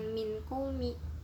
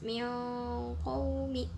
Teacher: bunyi n dari nun mati atau tanwinnya itu nggak kedengeran sama sekali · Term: ikhfa abad